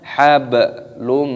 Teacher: dhammah tanwin bertemu dengan huruf mim, hukumnya dibaca idgham bi gunnah, dimasukkan dan disertai berdengung